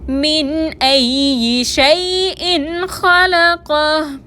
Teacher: من میں نون ساکن کے بعد حمزہ آ رہا ہے، نون کو ظاہر کر کے ادا کریں گے